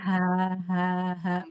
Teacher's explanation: Dia tidak dari dada. Dia dari pangkal tenggorokan.